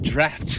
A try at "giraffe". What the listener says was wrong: You said giraffe. I think you just need to pronunciate the R a little bit, like giraffe. It sounds like draft. Like, you want to save this draft? You want to save this as a draft? Draft. And giraffe. You sound the same.